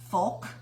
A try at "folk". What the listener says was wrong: F-O-K-E? It doesn't sound right. There's an L in it, folk. Like, how do you say egg yolk? Egg yolk. Yolk. Yolk. Because there's an L in it. Do you say meek or milk? Milk with an L in it. Why don't you say Mick